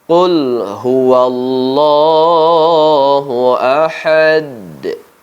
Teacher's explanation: huruf Dal kita matikan walaupun tidak memiliki baris mati Namun kita matikan karena kita berwakaf atau berhenti disitu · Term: Qalqalah Kubro